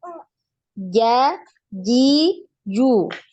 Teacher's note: tidak ada hembusan nafas, tidak ada aliran suara. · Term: jim